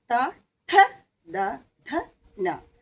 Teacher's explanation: ത ആകുമ്പോൾ നമ്മുടെ പല്ലിന്റെ പിൻഭാഗത്ത് നാവിന്റെ അഗ്രം വന്നന് മുട്ടുന്നുണ്ട് തവർഗ്ഗം മുഴുവനും അങ്ങനെയാണ് ത ഥ ദ ഥ ന ഇത് മുഴുവനും ഈ